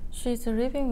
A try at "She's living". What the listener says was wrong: Living 발음이 약간 R이 약간 섞여 있는 발음이 나오는 것 같아요. 그래서 she's living.